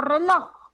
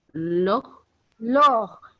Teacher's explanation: Entonces, es una palabra oxítona porque su fuerza de voz está en la última sílaba.